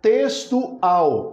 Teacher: Observe que a última já é a sílaba mais forte